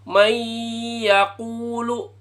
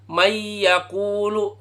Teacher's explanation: maka itu harus dengan dengung suara idung